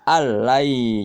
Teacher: alnya jangan ditahan, cukup ditekan saja karena dia bila gunnah